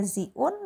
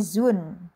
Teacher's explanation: Hamzahnya dihilangkan, yang tadinya ziun menjadi zun gitu. Dan didomah zi-nya gitu.